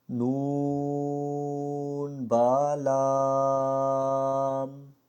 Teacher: ہم نے ان 2 حرفوں کو لمبا کیا اور با کو ایک الف کی مقدار کے برابر ہی پڑھا. تو اس کو اسی طرح ادا کرنا ہے، نہ کہ یوں نون با لام اس طرح نہیں پڑھنا، بلکہ ہم نے اس کو اسی طریقے سے ادا کرنا ہے جیسا کہ ہم نے تختی نمبر 1 میں سیکھا تھا.